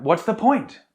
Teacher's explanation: so a rising intonation because often we use it out of frustration